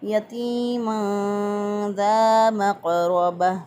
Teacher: तनवीन की आवाज़ को छुपा कर और एक अलिफ के बराबर गुन्ना करते हुए और गुन्ना की मिक़दार को नाक में ठहराते हुए अदा किया। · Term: इख्फ़ा